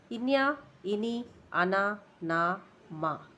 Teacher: ఇవి నాసికం ద్వారా పలకబడేవి కాబట్టి అనునాసికాలు అంటారు.